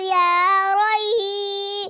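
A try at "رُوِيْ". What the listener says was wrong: لمبا نہیں کرنا. روئی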